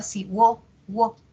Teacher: Hago el silabeo, separo en sílabas, encuentro un diptongo creciente, de cerrada pasa abierta